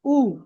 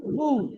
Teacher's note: মারুফ পড়বে, মাজহুল পড়বে না, অর্থাৎ সঠিক এবং সহি পড়বেন, ভুল পড়বেন না। পেশের আওয়াজ সামনের দিকে যায় আর ঠোঁট গোল হয়।